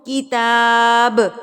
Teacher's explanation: اگر میں یہاں پر وقف کرتی ہوں تو کتاب با ہلا کے ادا ہوگا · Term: قلقلہ